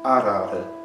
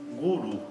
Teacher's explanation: Quando está entre vogais, por exemplo, na palavra arara, ele tem um som diferente. O som da semivogal ra do sânscrito tem sempre esse som mais fraco que o nosso R tem quando ele está entre vogais